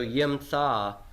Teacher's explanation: So I have guttural preferring A-class vowel, but the A-class vowel has compensatorily lengthened from a short pathak to a long kametz